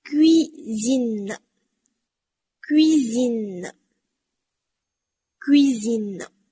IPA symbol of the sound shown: ɥ